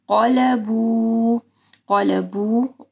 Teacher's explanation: یہاں پہ اخفا غنہ ہوگا, اور قاف کیونکہ موٹا حرف ہے تو غنہ بھی جو ہے موٹا ہوگا.